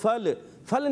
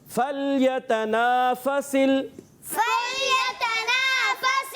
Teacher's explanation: لام کو ہلانا نہیں ہے, حرف قلقلہ سے نہیں ہے